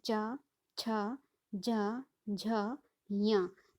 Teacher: च, छ, ज, झ, य, तो ये जो है ये तालु से उच्चारित होते हैं, इसलिए इन्हें तालव्य कहा गया है। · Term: तालव्य वर्ण